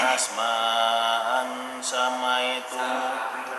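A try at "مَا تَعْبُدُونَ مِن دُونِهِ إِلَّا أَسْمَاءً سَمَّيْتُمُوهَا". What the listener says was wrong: Tasydidnya ditahan.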